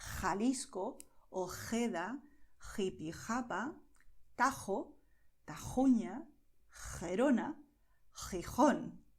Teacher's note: the sound is going to come from a deeper place from your throat